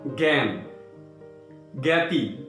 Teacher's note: দেখো, বর্গীয় জ যোগ ঞ যোগ আ সমান সমান জ্ঞ, এই যুক্ত বর্ণটি তৈরি হচ্ছে। মনে রাখবে, শব্দের আদিতে বা শুরুতে এই যুক্ত বর্ণটি থাকলে এর উচ্চারণ হয় জ্ঞ, গ, একটা গ এই ধরনের